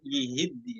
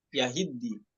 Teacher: ya-nya dibaca kasroh yihiddi, namun Hafiz dibaca fathah yahiddi